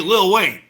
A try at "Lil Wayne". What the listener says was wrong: It's not Little, it's Lil. Oh, you sounds like you're saying Little. Yeah, Lil Wayne.